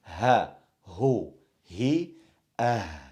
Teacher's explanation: the Ha is emitted by the partial opening of your vocal cords